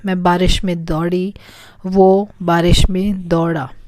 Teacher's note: The R sound is a bit deeper, like D. It's a combination of D and R.